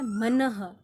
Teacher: अंतिम साउंड, अंतिम आवाज ह ध्वनि की आ रही है, यानी विसर्ग की आ रही है।